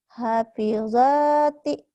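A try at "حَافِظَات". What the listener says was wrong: Bukan. Kan kosar ujungnya. Ayo hentikan. Hafizat.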